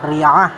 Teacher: ingat ain pangkal lidahnya harus diangkat karena sifat hurufnya isti'la. Cara membacanya makhrajnya sama seperti a, namun cara membacanya a-nya harus dengan mengangkat pangkal lidah, jadi tercipta huruf a.